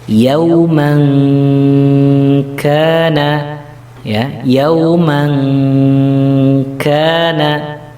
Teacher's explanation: contoh yang kaf ini membacanya NG karena memang makhrijul hurufnya ada di pangkal lidah.